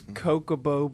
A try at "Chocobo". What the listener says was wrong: You say Kokobo? You know, there's an H there, right? That's not true.